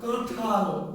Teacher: এই যে আপনি যখন বলছেন কাঁঠাল, তখন এই ক ধ্বনিটা অর্থাৎ চন্দ্রবিন্দু যার উপরে থাকছে তাকে নাসিক্য করে দিচ্ছে। চন্দ্রবিন্দু নাসিক্য না, চন্দ্রবিন্দু দিয়ে দোতিত বা উচ্চারিত ধ্বনিটা নাসিক্য।